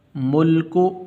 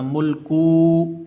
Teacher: کاف کے اوپر پیش ہے، اس کاف کو لمبا نہیں کرنا، ملکو ایسے لمبا نہیں کرنا۔